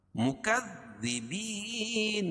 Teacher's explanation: مکذبین کاف دال ہے، دال کو باریک پڑھیں گے اور سختی کے ساتھ